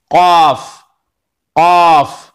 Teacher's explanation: जड़ जबान तालू, यानी जबान की जो जड़ है पिछले का हिस्सा है उसको तालू से मिलाकर कौफ अदा होता है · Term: बड़ी काफ